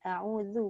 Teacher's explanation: A'udzu tu jangan lupa lidah keluarkan. A'udzu bukan zu. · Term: zal